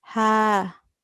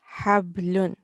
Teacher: we do not pronounce it from our throat. It is from our mouth.